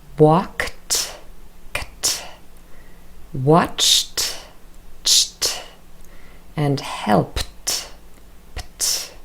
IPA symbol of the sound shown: t